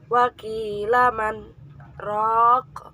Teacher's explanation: disebut dengan bacaan sektah sebab berhenti sejenak tanpa bernafas kira-kira satu alif atau dua harokat